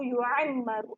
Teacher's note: اب دیکھیں یہاں پہ میں نے کسی رت کو لمبا نہیں کیا. لو یعمر، میم پہ شد ہے تو غنہ ہوگا، ناک میں آواز جائے گی، رو کو موٹا پڑیں گے، رو پہ پیش ہے.